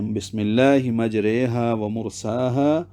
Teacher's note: امالہ کبرا زبر کو زیر کی طرف اور الف کو یا کی طرف اس طرح مائل کر کے پڑھنا کہ تلفظ یائے مجہول کی طرح ہو جائے، جس طرح اردو اور فارسی میں آئے اور آمدے کیا تلفظ ہے۔